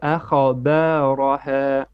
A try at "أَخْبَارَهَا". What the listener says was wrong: Okay, you're also bouncing the kha. You're saying akha ba. No, akhba. There is no qalqala on kha.